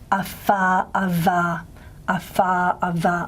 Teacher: with the labiodental, in ewe, the speakers will tend to raise their upper lip